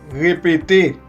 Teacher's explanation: corresponde a la R francesa, que se realiza haciendo vibrar la úvula en repetidas veces.